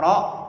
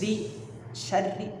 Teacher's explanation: Kalau fathah, dhammah itu ro harus tebal. Kalau kasroh baru tipis.